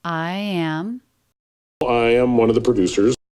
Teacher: So I and am both have a little bit of length as he's thinking about exactly what to say, exactly how to deliver this.